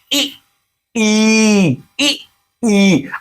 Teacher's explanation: आपकी जिभ तालु को स्पर्श कर रही है इसलिए इसका उच्चारण स्थान तालु है